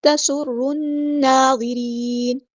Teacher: سین یہاں پہ اس کی سٹی واضح کرنی ہے، حروف صفیریہ میں سے